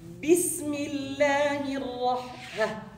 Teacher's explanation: this lam, it's basically shamsiyah, solar, right? So you're not gonna say it. You jump from the alif to the ra.